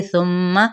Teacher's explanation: सुम्मा यहाँ पे सा नरमी के साथ पढ़ा जाएगा और मीम पे गुन्ना किया जाएगा